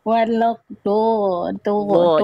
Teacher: dilafalkan dari pinggir lidah kita, disentuhkan ke gigi geraham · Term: huruf dot